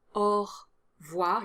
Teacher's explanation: So this is an exception, and honestly I can't think of another one. Definitely drop the E sound after the R